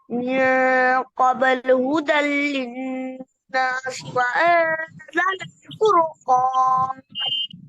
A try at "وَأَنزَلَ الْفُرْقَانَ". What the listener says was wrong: فور موटा है وأنزل الفرقان. फूरो ये झटका दे के नहीं पढ़ना। फुरकौन وأنزل الفرقان.